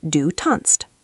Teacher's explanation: Because the stem ends with z, which already contains a t s sound, German usually drops the extra s in the s t. So it becomes du tanzt.